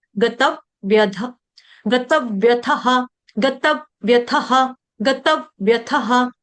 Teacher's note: double व का उच्चारण करेंगे, दो व आधे आधे